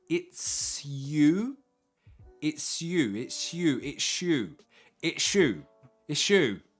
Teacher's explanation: it's you now if you remember from the Snape pronunciation video s+ y equals a sh sound